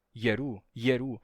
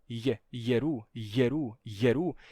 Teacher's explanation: a pessoa ia pronunciar esse iu e falando rápido sai assim gerando uma fricção